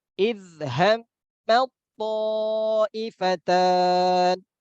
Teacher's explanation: langsung masuk ke huruf to karena lebih kuat ya, lebih kuat huruf to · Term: idgham